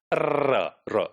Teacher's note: the tip of the tongue is set in motion and there is continuous vibration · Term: trill sound